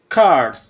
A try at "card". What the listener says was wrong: Pretty good, but you have to work on your D sound a little bit more too, okay? card.